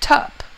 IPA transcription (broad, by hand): tʌp